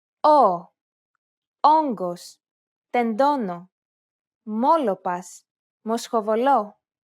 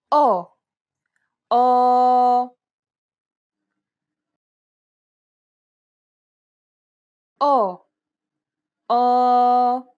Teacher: The sound is similar to the O sound in the word pot, though try to open and round your mouth more than you would normally.